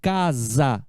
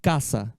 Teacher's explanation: só que aqui a gente pronuncia esse s com som de z casa né em espanhol não caça la casa de papel já